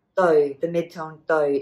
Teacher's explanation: Doi, the midtone doi, is your measure word, meaning pair.